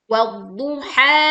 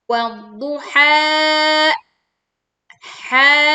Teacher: kita tidak menambah hamzah sukun atau membatasi suaranya atau kita mendadak mengerem ya atau memberhentikan suara panjang ha.